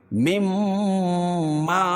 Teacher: میم ساکن کے بعد میم آئے تو ادغام ہوگا، ادغام شفوی ہوگا، یعنی غنہ کر کے پڑھیں گے